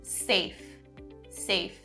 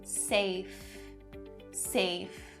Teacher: Be sure that that f sound is correct. Don't change it to the v sound. It's a voiceless sound.